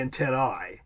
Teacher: In Latin, the correct pronunciation of an AE diphthong would be an I, so it would be antennae.